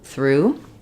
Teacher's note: we have the voiceless TH, the R, and the oo.